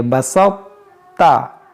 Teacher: ہلکا سا تا کی آواز کو موٹا کر دیں گے